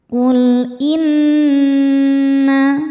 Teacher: Qul inna nunnya ghunah musyaddadah karena nun bertasydid. Cara bacanya berdengung. Tahan dengungannya kurang lebih dua harakat. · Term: gunnah musyaddadah